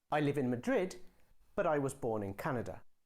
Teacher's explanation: you can use a rising tone to show that your sentence isn't finished yet